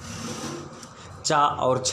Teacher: चा वर्ग का उच्चारण स्थान तालु होता है